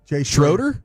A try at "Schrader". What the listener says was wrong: So, there's an O, but it's pronounced Shrader.